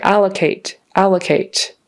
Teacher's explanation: the syllable stress on the first syllable